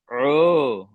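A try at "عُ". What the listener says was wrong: আবার হয়ে যাচ্ছে ও, এটা হয়ে যাচ্ছে উ।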